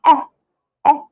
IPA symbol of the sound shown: e